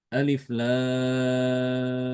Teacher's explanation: Imam Ibnu Amir mengimalahkan bacaan ro huruf ro pada fawatihus suar